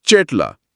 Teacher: ક ગ ઘ જેવા કંઠીય ધ્વનિઓ પછી જો ઈ કે એ જેવા સ્વર આવે ને તો એ ચ જ ઝ જેવા તાલવ્ય ધ્વનિ બની જાય છે.